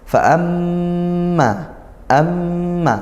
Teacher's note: mim bertasydid sama seperti Nun bertasydid ini dibaca ghunnah · keluarkan dari makhrajnya gunnah, yaitu di lubang hidung, di hidung khayshum